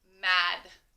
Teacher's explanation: when i say mad i don't hear the letter a i don't hear the long a i just hear ah which is the short a